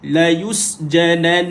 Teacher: bila berhenti nun sabdu maka dia kena berhenti dalam keadaan dua harakat, dipanjang ke sikit bunyi.